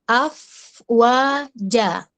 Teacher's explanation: Ngalir dulu fa-nya baru wa.